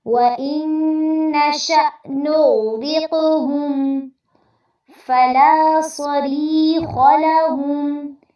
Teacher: فلا میں لام پہ مد اصلی ہوگی، اس کو لمبا کرنا ہے۔ صری میں را باریک ہوگی اور یہاں پر مد اصلی بھی کرنی ہے آپ نے۔